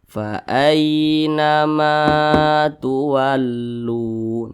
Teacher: di belakang huruf alif maka huruf mim dibaca panjang Mad Thobi'i panjangnya dua harakat atau kira-kira dua ketukan